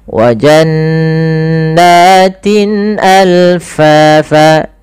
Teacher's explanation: Maaf, nunnya dibaca dengan gunnah, tahan.